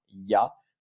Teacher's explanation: C'est-à-dire qu'on va avoir un espèce de I, de yi avant la voyelle.